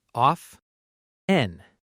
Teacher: Some learners pronounce the t clearly. Of 10, but a lot of native speakers say often with a silent t.